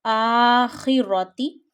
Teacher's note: Kha is a Mustalia letter. Read it with a thick voice. Akhirati. Don't stretch Zair below Kha.